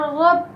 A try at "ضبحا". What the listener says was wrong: اب یہاں با ساکن ہے تو یہاں بیٹا با پہ کیا ہوگا؟ تو قلقلہ آپ نے چھوڑ دیا، قلقلہ کریں.